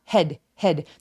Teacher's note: 턱이 거의 벌어지지 않는 입 앞에서 나는 head 소리고요